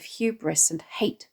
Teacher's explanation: The alliterated, aspirated sound of hubris and hate adds to the malevolent tone.